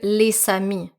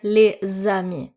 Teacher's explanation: If there's a leazison with the letter S, you're not going to pronounce it S, but rather zed. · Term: liaison